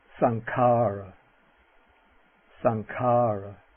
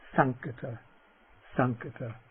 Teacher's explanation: this velar nasal will always be preceding another velar consonant.